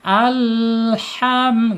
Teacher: ketika disukunkan ya, sifatnya akan tidak mantul ya, karena condongkan lidahnya kiri dan kanan. Alham gitu ya, tidak boleh mantul. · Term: inhirab